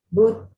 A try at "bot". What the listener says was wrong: acuérdate de la corta bot.